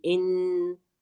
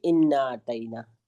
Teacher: इन में नून पर तजदीद लगी है तो इसलिए हम इस यहां पर थोड़ी देर रुकेंगे ठीक है ऐसे आवाज आएगी इन फिर उस पर मद भी लगा हुआ है तो उसको हम खींचेंगे इन कैसे पढ़ेंगे ठीक है इसको बिल्कुल जल्दी नहीं अदा करेंगे इसको जल्दी अदा नहीं करेंगे इन्ना नहीं पढ़ेंगे।